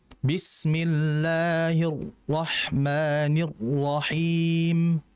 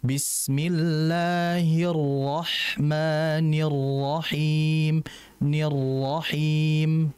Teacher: harusnya ro ini tetap mengalir disebabkan ro ini kan punya sifat tawasut mengalir tidak tidak terlalu